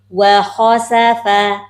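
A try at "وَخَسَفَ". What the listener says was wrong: Ibu tebalnya bukan kha, bukan kha. Jangan takut monyong, nggak apa-apa, tebal aja dulu. Kha. Nah, wa khasafa.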